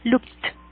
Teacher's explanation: Cuando el verbo termina en una K, ese ed también va a sonar como una T